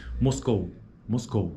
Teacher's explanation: de vogais dentro de uma mesma sílaba chamaremos de ditongo decrescente ditongo decrescente aquele que a proeminência acentual ocorre na primeira vogal